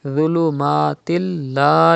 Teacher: idgham will be done and gunna will not be done, because in case of lam and ra, idgham is done without gunna.